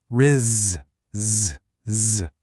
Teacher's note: that soft buzzing z sound at the very end